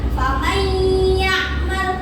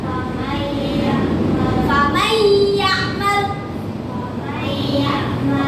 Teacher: Jadi ketika kalian membaca Al-Quran dan menemui nun sukun atau tanwin bertemu dengan salah satu huruf tadi yaitu ya, nun, mim, wawu, cara membacanya adalah memasukkan dengan dengung disertai sepanjang 2 harokat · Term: idgham biguna